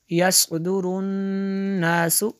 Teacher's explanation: नून में शद्दद है, यहाँ पे गुन्ना भी करेंगे।